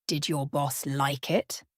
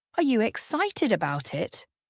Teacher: Listen to the way my voice rises at the end of the question.